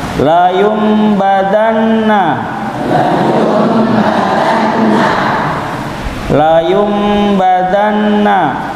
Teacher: setelah Nun sakin atau tanwin huruf ba maka dirubah Nun sakin atau tanwin itu dengan mim bersamaan dengan dengung